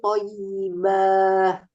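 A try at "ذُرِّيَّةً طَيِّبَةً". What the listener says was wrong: Nggak boleh dipanjangkan, Bu, nggak ada tanda panjang banyak ya. Dzurriyyatan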